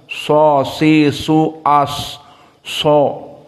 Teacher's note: Maka di saat kita membaca shad, lisan kita cenderung di atas karena mufakhamah. Dan mulut kita penuh.